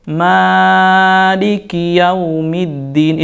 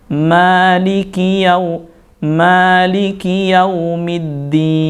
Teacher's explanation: Di sana lihat dua harokat, jadi tidak boleh lebih